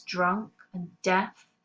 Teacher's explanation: we've got the very harsh dental alliteration on the words drunk and death